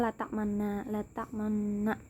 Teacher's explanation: ismam ini mencampurkan dhamma dengan sukun sehingga bibirnya itu seperti maju